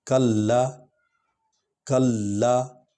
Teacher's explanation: دیکھیں لام پر شد ہے، اس کو ہم نے اس کے ساتھ اس پر زور آنا ہے، سٹریس آنا ہے، کیونکہ شد والا حرف 2 بار پڑھا جاتا ہے۔ کلا، کلا، کیونکہ اب آگے الف ہے، لام الف لا۔